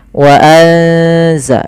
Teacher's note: Suara nunnya disamarkan ke zai. Wa anza, sambil ditahan bacaan eng-nya atau bacaan gunnah ikhfa, ya, dengungannya.